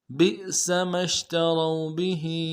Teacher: بئس ما اشتروا به أنفسهم أن يكفروا بما أنزل الله بئس ما اشتروا به میں با کو حمزہ کے ساتھ ملانا ہے، جو اوپر حمزہ ہے، حمزہ کو جب جزم ہو تو جھٹکا دیں گے، سین کو سیٹی باریک ہوگی، میم کو شین کے ساتھ ملانا ہے، شین کو واضح کریں گے، تا کو نرم سے ادا کریں گے، را کو واو کے ساتھ ملانا ہے، واو مدہ ایک الف دال میں کھینچیں گے۔